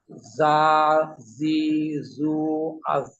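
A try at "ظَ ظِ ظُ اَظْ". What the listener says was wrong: জ মোটা হবে। হ্যাঁ, একটু মোটা করলেই হয়ে যাবে, জ। আপনি যদি মোটা না হয়, আপনি মুখটা গোল করেন, দেখবেন মোটা হয়ে যাবে। জ,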